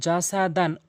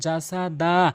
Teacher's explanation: ২ জবরওয়ালা হরফে ওয়াকফ করিলে ১ জবর এখান থেকে বাদ দিয়ে ১ জবর নিয়ে ১ আলিফ টেনে পড়বেন। ওয়ালা দান ওয়াকফ করলে ওয়ালা দা, এভাবে পড়বেন।